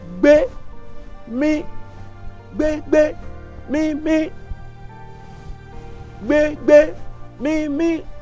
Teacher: Tó o bá ti na apá sókè báyìí, mí nìyẹn, mí ohùn òkè.